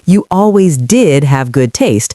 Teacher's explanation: She stresses the word did to show she's being emphatic.